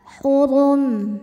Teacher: ra dibunyikan dengan tebal, tidak rileks lidahnya, tegang ya. Suara mengisi mulut kita. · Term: tafkhim